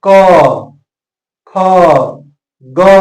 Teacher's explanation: ग तो इस तरह से कंठ से आवाज आ रहा है इसका उच्चारण स्थान कंठ है कंठ से इसका स्पर्श होता है